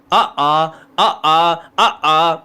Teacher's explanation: आ का उच्चारण स्थान होता है कंठ